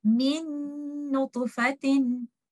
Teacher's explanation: We will merge letter Nun and we will hold the gunna for some time